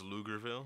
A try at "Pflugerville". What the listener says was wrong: It's PF. L. Pflugerville. But it's But yeah, if you pronounce the P, it'd be Pflugerville.